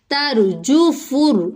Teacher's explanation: حروف لین جو ہے اگر ہم یو پڑھیں تو وہ مجہول ہو جائے گا، تو ہم اس کو مجہول نہیں کریں گے بلکہ معروف طریقے سے کس طرح سے پڑھیں گے، یوم را پر ہے، را ساکن سے پہلے زبر ہے، ترجفر جیم اور فا حرکات جلدی پڑھی جائیں گی، فا کو را سے ملائیں گے